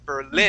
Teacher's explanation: You're putting the accent at the beginning, saying Berlin. The accent needs to be at the end, saying Berlin.